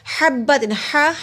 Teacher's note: حلوے والا ہا حلق کے درمیان حصے سے ادا ہوتا ہے، اس کو ایسے ادا کرتے جیسے ہوا باہر کی طرف آتی ہے۔